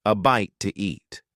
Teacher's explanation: In fast speech, when one word ends in a vowel sound and the next one starts with a vowel sound, we often add an extra sound to make it easier to say. In this case, the extra sound is W